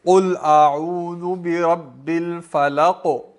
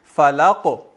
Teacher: کاف تو موٹا ہی رہے گا نا, موٹا بھی رہے گا اور ٹکرائے گا بھی